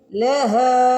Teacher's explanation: ہا کے اوپر زبر کے بعد الف آ رہا ہے، ہا کو کھینچیں گے